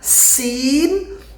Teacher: Sin gigi dirapatkan, sin. Nah, ini tidak ada desis yang banyak.